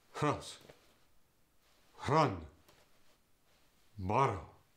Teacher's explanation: The R also gets the guttural stop at the beginning of the words or between two vowels. For instance, rose, run, or borrow go to rose, run, borrow.